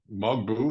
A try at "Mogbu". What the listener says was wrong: I think it's Mobu. I think the G is silent almost, but I don't know for sure.